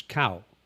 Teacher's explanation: And then there's a middle tone which is cow.